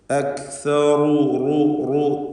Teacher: റായിനെ തഫ്ഖീം ചെയ്യണം, തടിപ്പിക്കണം റായിനെ